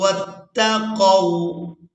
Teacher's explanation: قو نرمی کے ساتھ ادا کریں گے کیونکہ واو جو ہے یہ حروف لین میں سے ہے